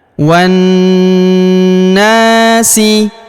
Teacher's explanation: huruf na kita panjangkan 2 harokat karena terdapat alif di depannya